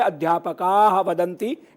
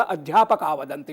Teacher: तो अध्यापकाः वदन्ति विसर्ग से पहले आ है और वदंती का वो घोष व्यंजन में वह आता है, इसलिए अध्यापकाः वदन्ति की जगह अध्यापका वदन्ति। विसर्ग का उच्चारण नहीं करेंगे। विसर्ग का जो स्थान है वो कंठ से हम अध्यापकाः, तो आह वाली ध्वनि आपको जो सुनाई देती है वो विसर्ग की ध्वनि है। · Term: विसर्ग का लोप